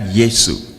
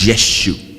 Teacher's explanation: that s had an sh sound not yesu it was yeshu yeshuas that's the closest they could